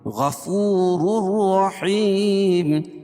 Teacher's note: را کے اوپر دو پیش ہے تو را پور ہوگی اور دوسری والی را جو ہے رائے مشددہ کے اوپر زبر ہے تو یہ بھی را پور پڑی جائے گی دونوں را پور پڑی جائے گی حیم وقف کی صورت میں · تنوین کے بعد ادغام بلا غنہ کے دو حرف لام اور را میں سے را ہے تو یہاں ادغام کریں گے لیکن غنہ نہیں ہوگا